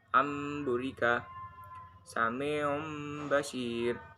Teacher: pengucapan nun mati atau tanwin yang bertemu dengan huruf ba yang berubah menjadi mim dan disertai dengan gunah atau dengung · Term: Iqlab